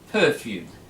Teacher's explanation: so we stress the first syllable